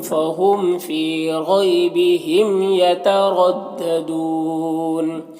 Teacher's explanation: یترددون، را کے اوپر زبر ہے، را کو پر پڑھیں گے، اور یہاں پر وقفی کی صورت میں مد عارض وقفی ہوگا